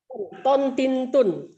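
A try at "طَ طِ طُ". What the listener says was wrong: Itu bunyi Jawa huruf O.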